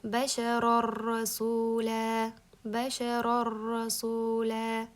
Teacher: mana shu yerda ikkita r borligini bildiramiz. Chunki mana bu nun rga idg'om bo'lib ketdi.